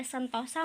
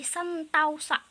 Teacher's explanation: dari yang tadinya vokal tunggal diubah menjadi vokal rangkap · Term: Diftongisasi